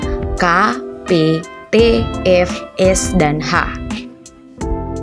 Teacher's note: bunyi tak bersuara adalah bunyi yang terjadi apabila pita suara terbuka lebar sehingga tidak ada getaran yang terjadi pada pita suara